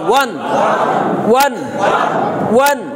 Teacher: এখন আমরা যখন 2 জবর দিলাম তখন একটা অতিরিক্ত ন যুক্ত হবে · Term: তানবিন